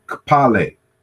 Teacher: this is the simultaneous articulation of K and P